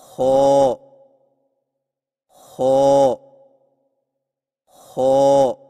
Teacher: زبان کی جڑ کو تالو کی طرف بلند کرتے ہوئے موٹی آواز میں پڑھیں، یعنی خو خو خو۔